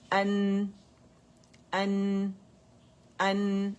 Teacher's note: حمزہ آپ نے الجوف سے ادا نہیں کرنا، حمزہ فتح ٹھیک ہے، اقص الحلق سے ادا ہوگا